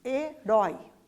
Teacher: Rói é a sílaba mais forte, né? Então é a última sílaba, por isso a gente chama de oxítona.